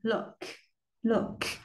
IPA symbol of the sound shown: ʊ